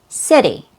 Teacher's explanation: So it's a very quick D sound. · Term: fast D sound